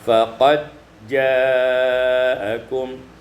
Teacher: faqad ja'akum idghamud dal fil jim diidghamkan dal pada jim menjadi faqad ja'akum pada ayat yang 157 azlamu mimman idghamul mim